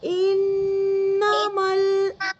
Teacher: जो नून की आवाज आ रही है ना, उसको हमें नाक में रखनी है।